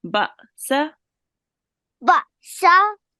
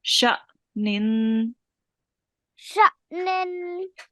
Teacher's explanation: we make that soft jerk when we join onto the alif